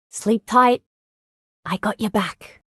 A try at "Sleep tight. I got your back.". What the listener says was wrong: Sleep tight. She's saying it like sleep tight. She's adding a lot of weird emphasis. Sleep tight. Tight is a one-syllable word.